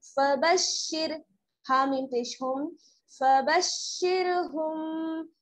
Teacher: रा जो है बारीक पड़ी जाएगी क्योंकि रा साकिन से पहले क्या है शीन पर जेर की हरकत